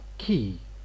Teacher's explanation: key phonemically we just put k and e but phonetically this is aspirated and it is fronted